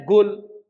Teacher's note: baca Quran dengan logat Hadramaut enggak boleh Pak misalnya apa Qul bacanya Gul